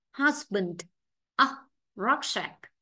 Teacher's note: Vậy ba cái đáp án A, B, C thì chữ cái U phát âm thành nguyên âm đơn ngắn là a